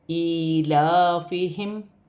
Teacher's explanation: یہاں پہ میم ساکن ہے، اس میں غنہ نہیں کیا جائے گا